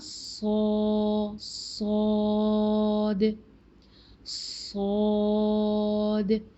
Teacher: स्वाद में पूरी की पूरी ज़ुबान पीछे से लेकर आगे तक ऊपर उठ जाती है और पूरा मुंह अंदर से फिल हो जाता है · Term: माउथ फिलर